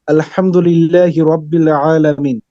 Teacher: হলকের মধ্যকান হতে আইন উচ্চারিত হয়েছে